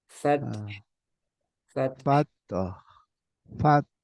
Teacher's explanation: jangan dipantulkan tapi dikeluarkan udara aja